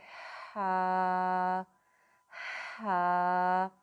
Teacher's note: ہا کی ادائیگی کرتے وقت آپ نے خیال رکھنا ہے کہ اس میں تھوڑا سانس والا ساؤنڈ اس میں آتا ہے، یعنی کہ یہ حلق کے درمیان والے حصے سے ادا ہوتا ہے۔ ہا ہا۔ جیسے ہم گلاسز صاف کرتے ہیں نا، تو ہا ہا ایک بھاپ سی بنتی ہے، ادھر سے یہ نکلنا ہے۔